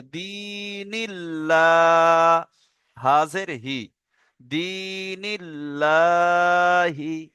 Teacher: আল্লাহ শব্দের আগে জের আছে, তাহলে কি করে পড়তে হবে? বারিক করে পড়তে হবে,